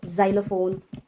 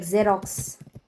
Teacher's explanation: when letter X is at the beginning of the word, then letter X makes z sound, which is letter Z sound.